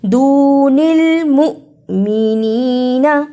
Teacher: جس حمزہ پر جزم ہو اس کو تھوڑا جھٹکا لگا کر پڑھتے ہیں